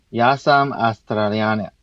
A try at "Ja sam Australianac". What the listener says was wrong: Pretty good, right?